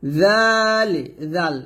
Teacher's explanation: জালটা পাতলা করে পড়বেন, জিহ্বার আগা সামনের উপরের 2 দাঁতের আগার সঙ্গে লাগিয়ে জালটা পাতলা করে উচ্চারণ করবেন